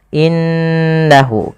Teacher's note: pada lafal innahu di sini suara nunnya harus kita tahan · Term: ghunah